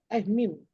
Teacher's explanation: Jahar dia tak ada angin.